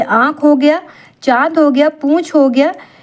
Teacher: अनुनासिक का उच्चारण मुख और नशिका दोनों से होता है।